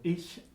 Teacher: Ich laut is the voiceless, palatal fricative